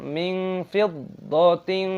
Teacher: kasra tanwin diikuti qaf dibaca ikhfa. Ikhfa berarti tersembunyi. Jadi, cara membacanya menjadi kabur.